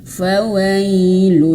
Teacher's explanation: Hukum bacaannya itu idgham bila ghunah. Jadi masuk ke huruf lam tapi tanpa digunahkan, tanpa didengungkan, tanpa ditahan begitu ya.